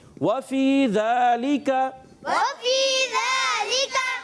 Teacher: واو کی ادائیگی ہونٹوں کی گولائی سے ادا ہوگا